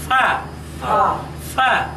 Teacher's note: সামনের দাঁতের আগা এবং নিচের ঠোঁটের শুকনো অংশের উপর রেখে এই অক্ষরটি উচ্চারণ করতে হবে